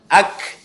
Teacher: Boleh dikasih angin sedikit kalau huruf kaf. Ak ya. Beda sama huruf qaf.